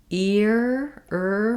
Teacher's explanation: my tongue is back and tight in that R position